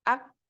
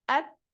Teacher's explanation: jadi huruf Kaf dan Ta ini kuatkan dulu syiddahnya baru keluar nafas daripadanya